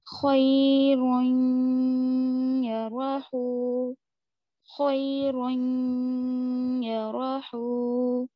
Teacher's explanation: تنوین کے بعد یا ہے تو آپ یہاں پر غنہ کریں گے. جیسے خیرین، روئیں، غنہ، ناک میں آواز چھپ رہی ہے تھوڑی سی، رک رہی ہے، چھپ نہیں رہی ہے بلکہ رک رہی ہے. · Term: ادغام مع الغنہ